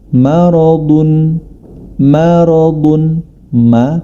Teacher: Dan kemudian pada huruf maradun, huruf mim ma, dia memiliki sifat istifal atau tidak tebal, atau lidah terpisah dari langit-langit. Huruf ro dan huruf do, maradun, adalah huruf yang tebal.